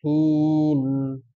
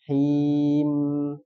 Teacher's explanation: ada mendengungnya sedikit di akhir itu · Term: bainiah